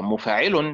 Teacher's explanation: مفاعل بنبر الحركة الأولى والحركة الثالثة، نبر حركة الميم وحركة العين، مفاعل هكذا.